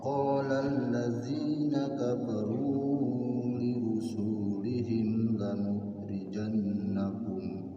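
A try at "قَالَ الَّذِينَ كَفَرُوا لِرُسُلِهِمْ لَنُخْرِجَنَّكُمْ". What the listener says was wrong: Awas hati-hati. Ulangi. Su-nya pendek.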